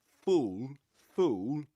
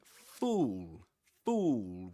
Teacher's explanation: So full short sound and fool the long sound.